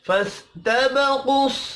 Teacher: قاف حروف مستعلیہ ہے پر پڑھا جائے گا